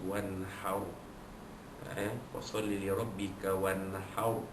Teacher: ra sukun itu dibaca tebal kerana huruf ha sebelumnya baris di atas